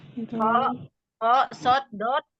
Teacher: Pangkal lidah naik ke langit-langit, jadi dibaca tebal hurufnya. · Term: isti'la